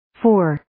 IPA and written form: foʊr (Four)